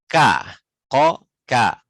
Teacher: K itu terasa lebih maju sedikit ke depan dari makhraj qaf, walaupun sama-sama di ujung lidah.